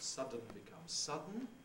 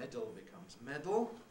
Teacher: it takes a schwa and a sonorant and produces a syllabic sonorant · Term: syllabic consonant formation